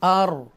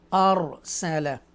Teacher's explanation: due to this zabar we read ra boldly, okay, strongly. Arsala, okay.